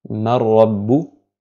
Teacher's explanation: on fusionne le nun sakina avec la lettre qui suit, donc le lam ou le ra, sans nasillement supplémentaire, sans nasillement du tout en fait · Donc le nun sakina de man suivi de ra, du ra de rabbu, mar rabbu, nun sakina plus ra, on prononce le ra sans appliquer de nasillement sur le nun, sans appliquer de nasillement en fait, et sans prononcer le nun sakina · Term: la fusion sans nasillement